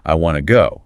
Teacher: >> That predictably reduces to wana to. The t from want and the t from to just merge into one.